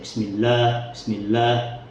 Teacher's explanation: Kemudian yang kedua itu adalah taglidul lamat atau menebalkan huruf lam. Jadi huruf lam yang seharusnya tipis menjadi tebal. Misal bismillah, itu jadi bismillah, bismillah, itu lamnya menjadi tebal.